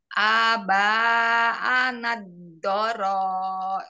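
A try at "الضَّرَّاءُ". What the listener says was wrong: Dorro, seperti yang tadi, Bunda. Aba, anal, dorro. Ditekan dua-duanya. Soalnya tasjid semua.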